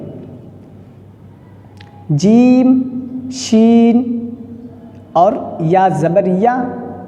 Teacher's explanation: زبان کا جو بیچ کا حصہ ہے، نہ شروع کا نہ آخر کا، بلکہ بیچ کا حصہ اور اوپر کا تالو، اس سے ٹچ ہو کر یہ حروف نکلتے ہیں۔